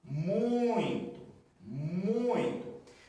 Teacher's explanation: Com esse som aqui entre o U e o I, ele nasalizando